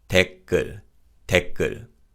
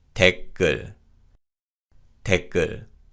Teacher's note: 시옷 받침 is silent and 기역 in 글 is pronounced as a tense consonant. So this is pronounced 댓글, 댓글.